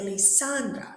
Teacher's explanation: so the stress is in the middle one